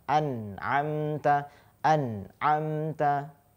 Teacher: Ketika nun sukun bertemu dengan ain, dia dibaca jelas, nunnya dibaca jelas. · memang dia hampir dekat seperti huruf nga ya gitu. Tapi bukan ke hidung dia lewatnya, ya. Bukan ke hidung. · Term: huruf ain